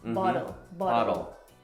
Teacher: instead of pronouncing that T, it's like a the sound, like a lazy D sound.